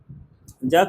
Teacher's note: तालु होता है ज का उच्चारण स्थान